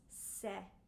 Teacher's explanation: it is a really open e e is bright e